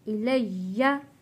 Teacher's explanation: या के ऊपर तशदीद है, सख्ती के साथ थोड़ा रुक कर हम पढ़ेंगे